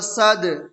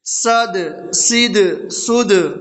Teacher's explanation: دال حروف قلقلہ میں سے ہے اور دال کے اوپر جزم ہے تو اس میں قلقلہ ہوگا